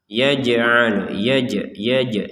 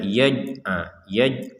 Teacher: Jim berharakat sukun kita baca dengan pantulan